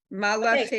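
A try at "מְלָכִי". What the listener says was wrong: so that second one is melachi, right? no vowel under the mem.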